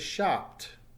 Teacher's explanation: Notice the T sound at the end as the P is not vibrating.